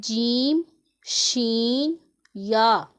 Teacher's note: इसे हरूफे शजरिया का नाम दिया गया है। ज़ुबान के दरमियान और तालु के दरमियान से अदा होते हैं।